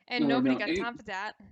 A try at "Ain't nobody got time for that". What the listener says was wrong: Actually, it might not even need the d. It might just be the at. Ain't nobody got time for that. For that, just kind of pretend like you're not gonna do the d.